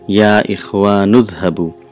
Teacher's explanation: huh boo yeah if you are new and is ha bui the three words but when you pronounce it sounds like one word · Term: assimilation of sounds